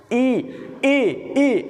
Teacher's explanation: जो हमारा तालू होता है जो मुंह की ऊपरी छत होती है इसके पीछे वाले भाग पर बहुत अधिक बल पड़ता है ई इ ई आप कह कर के देखें तो आपको लगेगा